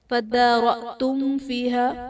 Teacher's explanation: فَادَّارَأْتُمْ میں دال حرف قلقلہ مشدد ہے تو یہاں پر قلقلہ خوب جماؤں کے ساتھ ادا کریں گے۔ فَادَّارَأْتُمْ فِيهَا میم ساکن کے بعد حرف با اور میم کے علاوہ فا ہے تو یہاں پر اظہار شفوی کا قاعدہ ہوگا، یعنی میم ساکن میں ہم غنہ نہیں کریں گے۔